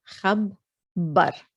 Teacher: it's geminated on the ba. So that means you have actually two bas. So as if you're saying khab ba.